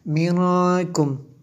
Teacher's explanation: نون ساکن کے بعد کاف ہے اور حروف اخفا میں سے یہاں پہ اس لیے اخفا ہوا